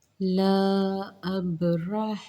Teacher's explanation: اب حمزہ با پر جزم آ رہی ہے تو یہاں پہ کیا ہوگا، با پر جزم قلقلہ کیا جائے گا، یعنی کہ با کو ہم نے نمایاں پڑھنا ہے